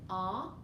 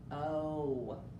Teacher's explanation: the short sound for o is ah the long sound is his name o